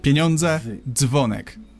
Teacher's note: this merge is simply the effect of reading d and z very fast